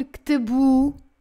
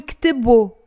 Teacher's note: most of the times as a O, not U like standard Arabic. So باللبناني ما منقول كتبو, منقول كتبو, O, with the O sound.